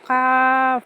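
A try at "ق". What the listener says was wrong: আপু, কাফ না, এটা কফ। কফ। ক এর পরে একটা ফায়ের মতো উচ্চারণ হবে, প এর মতো হবে না। কফ। এটা মোটা হবে না, নর্মাল থাকবে। ক্যাফ। এটা আপনার কফের মতো মোটা হয়ে যাচ্ছে, এরকম হচ্ছে, এরকম হবে না, একদম নর্মালি বাংলা কয়ের মতো। ক্যাফ।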